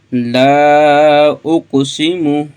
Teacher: اس کو ہم لمبا کریں گے لام الف کو، کیونکہ یہاں پہ مد آگی، مد منفصل آگی، اس کو ہم 2.5 الف کے برابر لمبا کریں گے۔